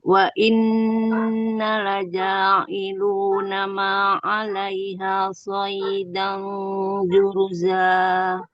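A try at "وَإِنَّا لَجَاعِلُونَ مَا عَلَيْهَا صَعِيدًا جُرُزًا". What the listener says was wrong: Ya, nanya panjang ya, ada 2 harakat.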